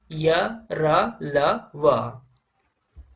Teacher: उच्चारण के समय जीभ मुख के किसी भाग को स्पर्श नहीं करती है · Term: अंतःस्थ व्यंजन